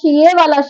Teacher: जो हमारा शय वाला श होता है ये किससे बोला जाता है? ये तालु से बोला जाता है।